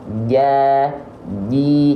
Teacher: Jim itu keluar dari bagian tengah lidah kita diangkat ke langit-langit dan menyentuh dia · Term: huruf Jim